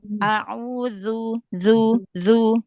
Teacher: Gesek sedikit huruf dalnya biar enggak kayak dal.